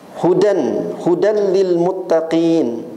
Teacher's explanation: tanwin berjumpa dengan lam idgham bila gunah